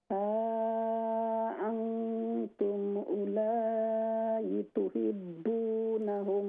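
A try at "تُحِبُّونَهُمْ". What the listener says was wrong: तुहिब्बू, हा को दुरुस्त करें, तुहिब्बूनहुम,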